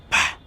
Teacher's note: We are using our 2 lips, and it's called unvoiced bilabial plosive consonant sounds. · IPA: /p/